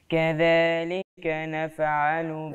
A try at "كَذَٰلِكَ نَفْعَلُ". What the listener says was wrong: انتوا كلكم النهارده بتقلق نفعل زعلانه انا من الموضوع ده